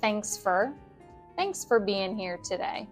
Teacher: for becomes fur in rapid speech.